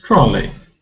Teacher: we don't pronounce e y as a long vowel sound because it's not stressed rather it's a short vowel sound